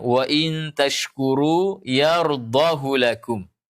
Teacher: hak kinayah di sini tidak dibaca panjang. Tandanya yang pertama, tidak ada waw kecil setelah hak kinayah.